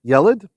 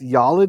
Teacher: a segol, the three dots, is a short vowel, whereas a kometz usually is a long vowel